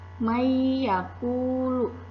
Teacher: suara nun sukunnya dimasukkan ke dalam huruf ya dengan dengung